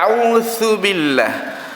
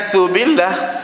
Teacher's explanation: Huruf zal itu digigitnya lidah kita pada hujung. Zal itu makhrajnya. Sifatnya itu jahar.